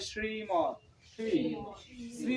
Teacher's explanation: তালেব্য স এর উচ্চারণ যখন আমরা করব তখন জিহবাটা অবশ্যই উল্টে তালুতে তালুর দিকে লাগাইতে হবে